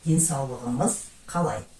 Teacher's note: при добавлении окончания к слову денсаулық, «х» переходит на «г»